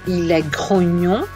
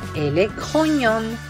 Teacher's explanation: Vous pouvez remarquer ici que, au féminin, on perd la nasalisation. Grognon, nasal, grognon, pas de nasalisation.